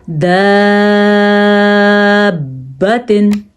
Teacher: با پہ جھٹکا پیدا ہوگا کیونکہ ویسے بھی حروف کلکلہ میں سے ہے اور آیا بھی مد کے بعد مشدد حرف ہے۔